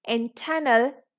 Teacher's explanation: the vowel e is saying the schwa sound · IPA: ə